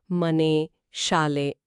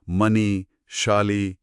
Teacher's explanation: ಮೈಸೂರು ಕನ್ನಡದಲ್ಲಿ ಸಾಮಾನ್ಯವಾಗಿ ಏಕಾರದಲ್ಲಿ ಪದಗಳು ಮುಗಿತಲ್ಲ ಮನೆ ಶಾಲೆ ಅಂತ ಅದೇ ಧಾರವಾಡ ಕನ್ನಡದಲ್ಲಿ ಈ ಕಾರದಲ್ಲಿ ಮುಗಿಯುತ್ತೆ ಮನಿ ಶಾಲಿ ಹೀಗೆ ಕುದುರೆ ಇದ್ರೆ ಕುದುರೆ ಆಗುತ್ತೆ ಓ ಹೌದಾ ಹೌದು ಇದು